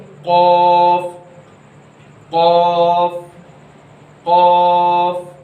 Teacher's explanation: आपकी ज़बान की जो जड़ है वो आपके तालु के नरम हिस्से से लग जाती है